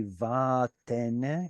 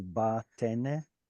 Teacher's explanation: So there's a vowel before it. Yeah, the vowel before it scares away the weak dagesh and creates a v sound